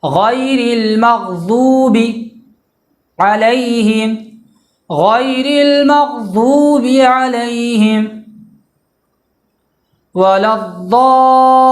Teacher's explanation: کنارہ زبان داڑھ سے مل کر ضاد ادا ہوگا، یعنی کنارہ زبان جو بائیں سائڈ کا کنارہ زبان ہے وہ داڑھ میں جہاں سے ہم چباتے ہیں، داڑھ کا جو حصہ ہے جو دانت ہے اس میں اس کے کنارے میں ٹچ ہوگا تو ضاد ادا ہوگا۔